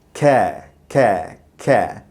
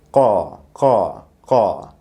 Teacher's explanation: ka, like kha, uses the middle of your tongue against your soft palate